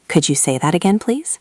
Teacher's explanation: We want to ask politely, so we can say, "Could you say that again, please?" This is simple, but the tone is very important. Your voice should go up at the end to show it as a question. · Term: intonation